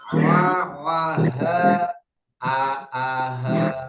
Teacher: tenggorokan pita suara terasa sempit untuk ain dan ha ini yang paling bawah.